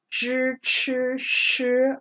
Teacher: I'm making it very breathy I'm making it very tight